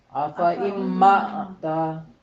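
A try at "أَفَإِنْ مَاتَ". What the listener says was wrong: افا ام ماتا پوری اگر نہیں کریں گے، متا کریں گے تو وہ آدھی آواز ہوگی، پوری نہیں ہوگی. آفا تو دونوں آدھی آدھی کرنا ضروری ہے.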